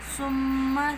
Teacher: میم مشدد ہے، ناک میں آواز لے کے جائیں گے، ایک الف کا غنہ کریں گے